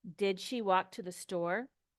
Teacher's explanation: it's a yes no question the answer is yes no so the intonation goes up